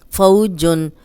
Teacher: اب فو واو لین ہے، جزم والی واو پیچھے زبر، اس کو بغیر کھینچے نرمی سے پڑھیں گے۔